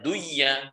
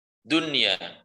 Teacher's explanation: Kita perhatikan di situ dunya ini satu kata. Nun sukun di tengah kalimat, ya-nya di setelahnya. Maka di sini bukan dibaca duya, tapi dibaca dunya.